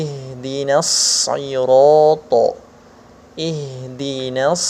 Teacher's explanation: harus ada suara yang mengalir pada huruf shod ini ketika dia sukun ataupun ketiken Iya dalam keadaan bertasydid ya harus ada alirannya Hai